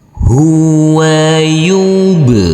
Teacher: huruf ba harus kita pantulkan karena di sini adalah bacaan Qalqalah